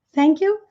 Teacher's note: o outro respondeu o agradecimento com outro agradecimento, dando uma ênfase no you.